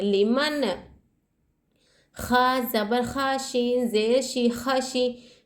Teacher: ٹھیک ہے، یہاں پر نون ساکن کے بعد حرف حلقی میں سے خا آ رہا ہے، یہاں اظہار کا قاعدہ ہو رہا ہے. تو ہم یہاں نون کو ظاہر کریں گے، غنہ نہیں کریں گے، نہ اخفاء کریں گے